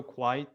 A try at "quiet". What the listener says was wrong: Candidate does mispronounce quiet though. Again, it sounds like he's pronouncing it with one syllable, like quite, quiet, but it should be two, quiet.